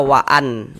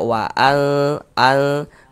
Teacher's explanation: Kemudian di bagian al-nya itu suaranya itu kita tahan ya, kita panjangkan sejenak ya. Kita dengungkan sepanjang dua harakat. · Jadi yang dibaca samar itu adalah bunyi nun sukunnya. Jangan dibaca waan berbunyi jelas begitu.